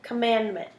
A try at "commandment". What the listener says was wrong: So the syllables in that word are come, mand, mint. So you made T an extra syllable.